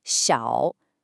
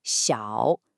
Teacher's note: this is the third tone, which has this distinct falling, then rising quality. You kind of dip down, then scoop back up.